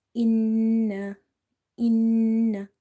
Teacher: holding the sound of such noon and taking it into the nose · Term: nasalization